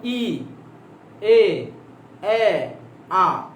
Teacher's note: আ বলার সময় জিহ্বা একদম নিচে নেমে যায়